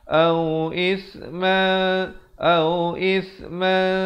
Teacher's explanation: ikhfa kena baca dengan samar di antara bunyi tanwin dan sa, dua harakat